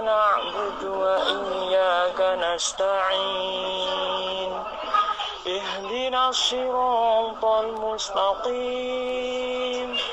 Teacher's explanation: Untuk iramanya sudah dapat sebenarnya ya. Hanya itu tadi nadanya cuman naik sama datar aja, mungkin belum bisa turunnya ya. Turunnya masih ke datar terus gitu. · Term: naik datar turun